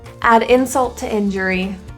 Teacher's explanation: In the word insult and to, we have two of the same sound, the T. So we'll say that T just once.